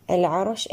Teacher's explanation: العرش اللام هنا نأتي لها بالبينية وهي لام مظهرة قمرية. العرش أيضا الراء هنا نأتي لها بالبينية وهي مفخمة